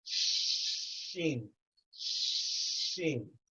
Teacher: With sheen, it is touching. It's touching the top layer, the palate. The top layer of the mouth inside, it's touching.